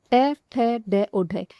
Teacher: वे शब्द जिनके उच्चारण में या बोलते समय हमारी जीभ है यह तालु को छूती है या स्पर्श करती है। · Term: मर्धुन्य ध्वनियां